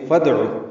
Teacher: دال ساکن پہ قلقلہ ہوگا